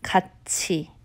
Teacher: not cut T you would think it would be cut T with the T sound it's actually a CH sound